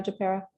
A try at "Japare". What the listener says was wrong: It's Japare, long A on the end.